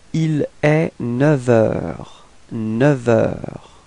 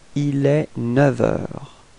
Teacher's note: Okay, and so with the liaison, so you can see that the liaison is coming between neuf and heure, and actually it's quite tricky in this case because we will change the sound, so we won't pronounce the F, but it would sound a bit more like V